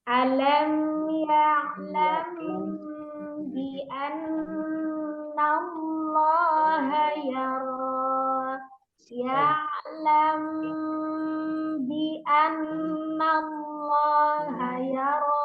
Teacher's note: ini hukumnya ikhfa safawi tidak boleh mengurangi durasi gunnahnya karena masuk di dalam gunnah yang kamilah, yang sempurna